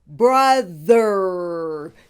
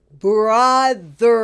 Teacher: The O in brother is pronounced as a short vowel U, like in the word up and hush.